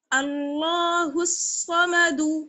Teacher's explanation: صاد کو موٹا پڑھنا ہے اور باقی سب کو باریک